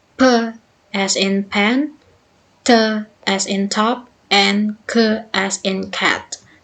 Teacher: The first one is stop. The active and passive articulators are brought together to make a complete closure, so that airflow out of the mouth is completely cut off. The example is p as in pen, t as in top, and k as in cat.